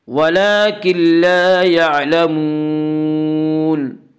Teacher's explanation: یہاں نون ساکن کے بعد لام آ رہا ہے اس لیے یہاں پہ ادغام تام ہوگا یا ادغام بلا غنہ بھی کہیے۔